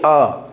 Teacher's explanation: अ बोलिए अ हमारा जो होठ है वह गोलाकार नहीं बन रहा है। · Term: आवृत्त मुखी स्वर